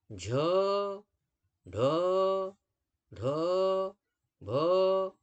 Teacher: आपके गले में एक तरीके से कंपन होने लगेगा